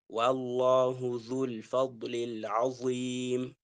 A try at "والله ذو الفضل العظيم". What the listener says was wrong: والله ذو الفضل العظيم رقق العين أنا أريدك أنك تأخذ نفس وتأتي بلا كل في نفس واحد، هذا أكمل وأجود.